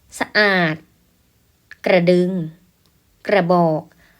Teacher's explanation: เราออกเสียงพยางค์หน้าเพียงสั้นๆเราไม่ออกเต็มเสียงนะลูก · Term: ครึ่งเสียง